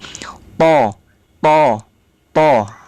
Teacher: Huruf to itu letaknya ada di lidah. Nah, ujung lidah disentuhkan ke langit-langit yang bagian depan, seraya didorong ada tekanan dari belakang ya